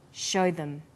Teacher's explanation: also uses the words show them. Here, show is stressed and them is unstressed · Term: vowel and consonant linking